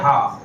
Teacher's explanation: हा, तो ये कंठ है, कंठ से मुख से आवाज निकल के आ रही है, कंठ के द्वार से आवाज निकल के आ रही है। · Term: काकल्य वर्ण